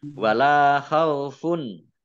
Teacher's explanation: lam fathah alif, matobi'i, panjang 2 harokat. Domah tanwin bertemu dengan huruf ain, bacaan izhar, dibaca jelas.